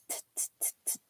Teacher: of T so you take your the tip of your tongue tip of your tongue and you place it just kind of where your teeth and your gum line meet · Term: hard sound of T